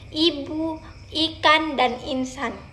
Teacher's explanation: pada vokal I sudut bibir direntangkan ke samping sehingga bentuknya melebar